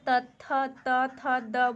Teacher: हमारा जो है त थ द बोल रहे हैं तो दंत पे इसका प्रभाव जा रहा है, तो हमारा क्या हो जाएगा, दंत हो जाएगा।